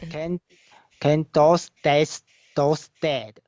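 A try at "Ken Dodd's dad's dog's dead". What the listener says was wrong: See, as you observed, you missed the last letters of those words. It should be Ken Dod's dad's dog's dead. Sorry, Ken Dod's dad's dog's dead. So I always pronounce the last letters. No, but you miss this one. These were letters. highlighting the letters there.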